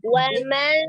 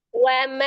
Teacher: ketika nun itu pertama ujung lidahnya dirasakan ke gusi, tapi nempelnya cuma sebentar. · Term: nun sukunnya